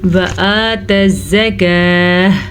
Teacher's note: کھڑی زبر کا دھیان رکھنا ہے، اس کو کھینچ کے پڑھنا ہے، جبکہ واو کو شارٹ پڑھنا ہے، واو پہ زبر ہے.